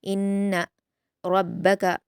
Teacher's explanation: नून मुशद्दद गुन्ना के साथ जल्दी पढ़ा जाएगा हरकत होने की वजह से · रा को पुर पढ़ेंगे और काफ को जल्द।